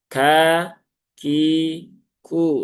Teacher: Kaf dia juga ada sifat hamsnya ya, salah satunya seperti huruf ta